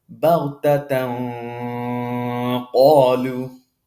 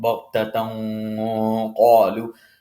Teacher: I'm not hiding that nasalization. I'm making that nasalization as if it's my mouth is full.